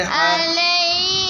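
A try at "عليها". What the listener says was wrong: Sorry ہی نہیں، ہا زبر الف تھا مس ہو. علیہا.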